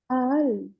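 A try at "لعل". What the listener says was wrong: it's not alif. It starts with lam, lam, ain, and lam. Lal, lal. lam, ain, and lam.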